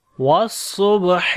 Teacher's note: Sad we read in heavy sound. On the ba we make qalqala, which is the weak qalqala.